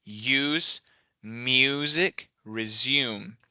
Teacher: So it's not us or music or resume, it's use. There's kind of a y sound coming up at the front.